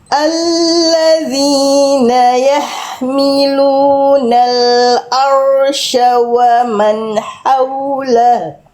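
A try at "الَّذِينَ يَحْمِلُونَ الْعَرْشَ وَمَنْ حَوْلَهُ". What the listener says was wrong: Oke, roh sukunya masih agak nuansa-nuansa Eropa gitu ya, nuansa-nuansa bule. Al-arsya. Al-arsya. Dilatih kita bareng-bareng roh sukun sebelumnya fathah tebal. Dan jangan sampai hilang getarannya.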